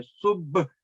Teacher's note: آپ کے جو ہونٹ بند ہو کے ایک دفعہ کھلنے چاہیے تب وہ قلقلہ حروف ادا ہوتا ہے